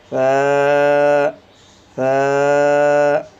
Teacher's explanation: زبان کا کنارہ اور زبان کی نوک اور اوپر والے دانتوں کے کنارے کے ساتھ آپ کی زبان ٹچ ہوگی